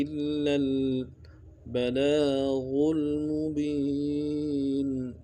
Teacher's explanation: الا میں تشدید ہے، کھینچیں گے اور آگے لام کے ساتھ ملائیں گے